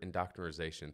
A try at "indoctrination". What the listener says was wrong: Indoctrination. I mean, it's like mixing immunization with indoctrination, which is, I mean, every time you say that word, you know, Rudy Giuliani's head explodes.